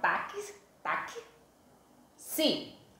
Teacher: Eu não pronunciei a palavra taxi, com o som de X. Eu pronunciei táxi. Então, tem um som a mais, que é o som do K. Logo, eu tenho 4 letras na palavra táxi, mas quando eu pronunciei, que são os sons, os fonemas, eu vou ter 1, 2, 3, 4, 5 fonemas, certo?